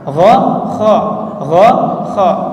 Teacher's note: Kalau kha itu maju sedikit dari gha. Gha itu lebih ke belakang.